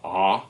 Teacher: in the low central, we have the ah sound, and you can really feel your jaw drop with that one.